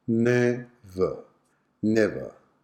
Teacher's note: the schwa sound is on the word ending er